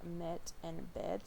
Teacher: Okay, so then we have the rest of the front vowels, and that's going to be the epsilon, low, mid, front, unrounded, and lax